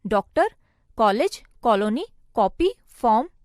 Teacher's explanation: इसका उच्चारण आ और ओ का मिश्रित उच्चारण होता है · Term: आगत ध्वनियां